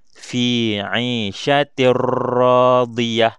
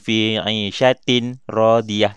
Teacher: Kita masukkan fi 'ishatir radiyah. Kita masukkan tanwin baris bawah ni ke dalam huruf ra. Tapi tidak dengung. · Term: idgham bila gunnah